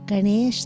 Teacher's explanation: the tongue is retroflex on the end not is curled back like ganes is trunk and this is